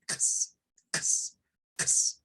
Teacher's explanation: el sonido de la X es como una K y una S. Es como decir ks, ks, ks.